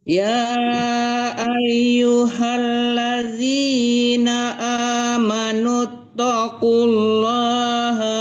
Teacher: Amanut langsung ditekan ke ta. Tanya kan tasdid itu ya. Jangan dipanjangkan nut. Amanut tidak panjang nu-nya ya.